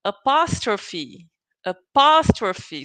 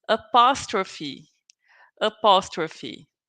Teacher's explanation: So you have to put the emphasis in the second syllable. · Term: sílaba tônica